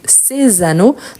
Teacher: vous voyez que le s il apparaît avec les sons de Z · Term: liaison